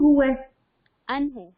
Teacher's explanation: نون ساکن کے بعد ہا ہے حروف حلقی میں سے, یہاں پہ اظہار کریں گے